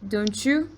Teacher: you can make a ch sound, meaning when a T comes before a Y, it should sound something like, don't you?